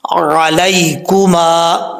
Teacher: اکثر لوگ آئین کو حمزہ پڑھ جاتے ہیں، حمزہ نہیں پڑھنا · میم کے آگے الف ہے، ایک الف کی مقدار لمبا کریں گے ، اور یہاں پر یا جو ہے لین ہے، یا مدہ